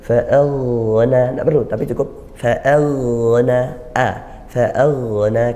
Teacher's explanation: Dan hati-hati karena ghain ini huruf tebal, kadang-kadang huruf sebelumnya ikut tebal, jangan ikut tebal juga. Fa'aghna, a-nya tidak usah ikut tebal, apalagi bibirnya ikut.